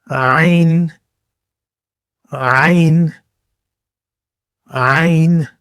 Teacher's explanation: گلے کے اندر سے، جیسے آپ کے حلق سے ہلکی آواز نکلتی ہے